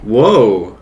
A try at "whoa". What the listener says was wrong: No, not R sound. Whoa.